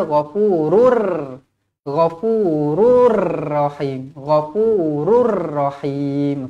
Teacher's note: idgham bila ghunah tak dengung